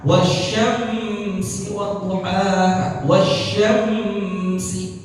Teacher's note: Kadang-kadang orang baca mimnya ditahan.